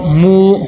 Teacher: واو دیکھیں، واو مدہ آ گیا، ایک الف کے برابر لمبا کریں گے۔